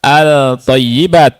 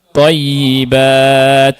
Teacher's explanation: ketika alif lam masuk ke huruf th tidak dibaca al thayibat tadi, tapi dimasukkan ke thayibat ya. At thayibat ya. · Lam sukunnya masuk ke huruf syamsiyah secara sempurna. · At-thayyibat, ya. Lihat, lamnya tidak dibaca. Tapi yang dibaca adalah huruf ta. Ya, lam ini kan asalnya al ya. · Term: idgham syamsi